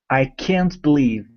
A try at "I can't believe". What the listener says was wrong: Good, good. That's it.